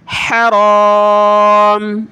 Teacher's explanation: اس کو آپ حرام نہیں پڑھیں گے را کو موٹا کریں گے